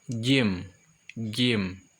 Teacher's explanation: tempat keluarnya dari tengah-tengah lidah